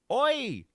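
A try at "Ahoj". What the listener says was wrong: you're forgetting the A, though.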